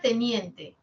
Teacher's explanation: tiene la media anterior, la alta anterior, y en general son anteriores